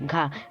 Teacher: घ का उच्चारण स्थान जो है कंठ से बोला जाता है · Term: कंठ ध्वनि